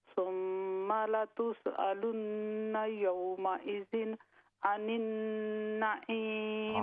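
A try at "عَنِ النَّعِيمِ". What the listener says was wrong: आनिन, दोनों आइन है। सुम्मा लतुसअलुन्न यौमइज़िन अनिन नईम। अनिन नईम, अनिन नईम।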